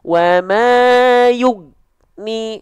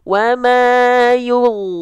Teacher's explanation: Goin harus dialirkan suaranya. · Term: huruf goin